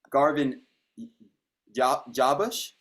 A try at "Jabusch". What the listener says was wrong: It's actually Jabusch. You pronounce it like there's a Y in it, even though there's not.